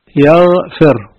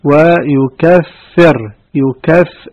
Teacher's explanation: والغين عندما تلفظ يصاحبها اهتزاز في الوترين الصوتيين، يعني هي حرف مجهور واضح